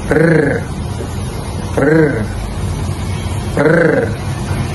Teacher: Antaranya adalah lidah di bahagian atas gusi. Hujung lidah ni berada di bahagian atas gusi supaya dapat menghasilkan bunyi getaran. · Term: konsonan getaran